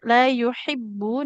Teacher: huruf H-nya di tengah tenggorokan